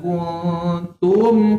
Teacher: Kenapa tum dibaca jelas? Sebab mim ini ada sukun. Baca jelas.